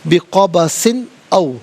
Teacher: بقبسن، او، سین کے نیچے دو زیر کی تنوین، اس کے بعد حرف علقی حمزہ آ رہا ہے تو یہاں بھی تنوین کو اظہار کے ساتھ پڑھیں گے